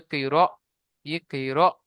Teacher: তাহলে হামজার উপর যখন সাকিন আসবে তখন হামজাকে একটু ঝাটকা বা ধাক্কা দিয়ে পড়তে হবে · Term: হামজা সাকিন